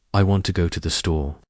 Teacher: We don't stress to or the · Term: English rhythm